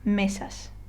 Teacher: So if I were to read this word correctly, I would say mesas. Okay, so I kind of stress, or I put more emphasis on the first syllable, or next to last syllable.